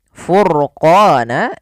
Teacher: Kemudian pada lafal ra, furqana, ini ro-nya dibaca dengan tebal, maka ini kita bisa katakan dengan ra tafkhim namanya. Dibaca dengan jelas.